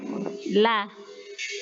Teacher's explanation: Jadi intinya ketika kita mengucapkan lam, kita bisa terlihat gigi-gigi yang di bagian depan la, terus la itu, dan adapun suara lam itu keluar dari rongga di antara saat lidah itu menempel dengan ujung gigi depan